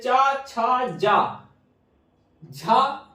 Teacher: चा वर्ग तो पूरा तालव्य संस्कृत में था, हिंदी में भी पूरा तालव्य है